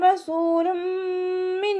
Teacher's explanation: തെൻവീനിന് ശേഷം ബിഗുന്നയുടെ അക്ഷരമായിട്ടുള്ള മീമ് വന്നു. തെൻവീനിലുള്ള നൂനിൻ്റെ സൗണ്ടിനെ മീമിലേക്ക് ലയിപ്പിച്ച് ഉന്നയോടുകൂടി ഓതി കൊടുക്കുക. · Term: ലയിപ്പിക്കും